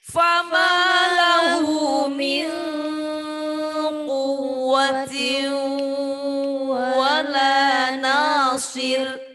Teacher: Ikhfanya 2. Fama lahu min udah 2 ketukan full baru quwwa ya.